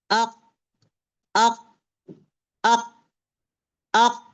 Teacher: अब मैं क्या कर रही हूँ, जबान को, पीछे का जबान को उठाई हूं मैं, राइट, उसको सीधा जाके नरम तालु से जाके चिपका दी हूं मैं। आवाज बंद हो गई है अपने मखरज में, गौर करें, अक, अक, अक। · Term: कॉफ